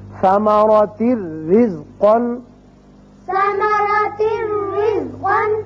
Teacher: اسی طرح را تنوین کی وجہ سے ایک زیر پڑی جائے گی اور صرف را ہوگا، یہاں نون کی آواز نہیں آئے گی